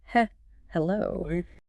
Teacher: a deliberate softening of the attack on the initial vowel or consonant. So instead of slamming into a word like hello, which risks a sharp, tense closure of the vocal cords, they might lightly stretch the first sound. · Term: slight prolongation